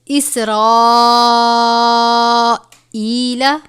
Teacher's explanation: 5 الف کے برابر ہے، یعنی اس کو 5 الف کے برابر لمبا کرنا ہے